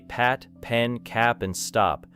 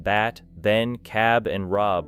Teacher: noticing how the paper moves when the P sound releases air. Then compare the movement with bat, ben, cab, and rob, where the vibration becomes more important.